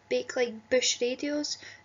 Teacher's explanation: It's quite a strong, plosive B sound that pulls us into that.